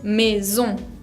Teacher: la ON, que es una nasal, que se pronuncia ON, sin pronunciar demasiado la N.